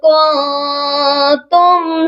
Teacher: میم کو صرف ظاہر کیا جائے گا، غنہ نہیں ہوگا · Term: اظہار شفوی